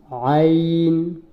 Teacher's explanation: আইনটা হা, আইন একই মাখরাজ থেকে উচ্চারণ হয়। আইনটা হায়ের মতোই একই মাখরাজ থেকে উচ্চারণ হয়, অর্থাৎ গলার ভিতর নিয়ে একটু চাপিয়ে।